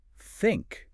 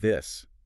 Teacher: But it is mechanically required to get that unvoiced air friction in a word like think, or the voiced vibration in this. You can't just fake it by putting your tongue behind your teeth.